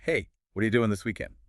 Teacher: The D links with Y to make G, vowels reduce. And doing often loses that final G sound in casual speech, becoming doing.